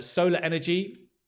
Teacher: So only when there's a vowel in the next word, you will pronounce that R.